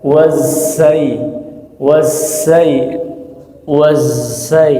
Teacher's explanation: itu awalnya zai, tapi di tengah perjalanan bocor.